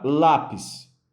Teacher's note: Lápis, ela tem a sua sílaba mais forte posicionada na penúltima posição. Fazendo isso, essa palavra é uma paroxítona.